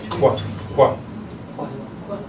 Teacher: So you just make that K sound, then you round your lips. Very good. So anytime you see that secondary articulation as a W, it just lets you know round your lips as you're pronouncing that sound.